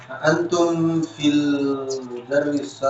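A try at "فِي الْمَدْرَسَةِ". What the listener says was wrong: Fil bukan mudaris ya. Kalau film mudaris itu apakah kalian lagi di dengernya ngapain?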